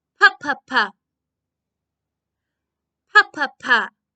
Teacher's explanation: if i put my hand in front of my mouth a little bit of air comes out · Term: sound of p